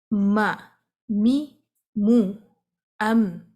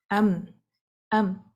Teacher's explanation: جبکہ جب ہم میم کو سکون سے پڑھتے ہیں، یہاں پر بھی ہونٹ آپس میں مل جاتے ہیں، ڈسکنیکٹ نہیں ہے، لیکن آواز بھی ٹریپ نہیں ہے، کیونکہ آواز نے ایک نیا روٹ لیا اور وہ ناک کی جانب سے ہمارے ناک سے باہر کی جانب آ گئی